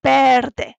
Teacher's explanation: when we see a V in Spanish, we have to say it as a B sound, like in the number nueve.